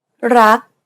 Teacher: In order to pronounce this word properly, however, you want to stop just as the back of the tongue contacts the roof of the mouth. Never release the air of final consonants in Thai words. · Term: unreleased